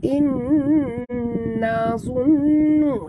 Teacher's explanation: Nun mati bertemu nun, idgham ma'al guna, dengung dekat sini, dengung yang sempurna